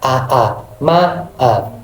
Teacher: Nah, deret vokal di mana dua vokal bergambingan tetapi terpisah oleh batas suku, atau masing-masing vokal ini memiliki hembusan nafas sendiri sehingga suaranya terpisah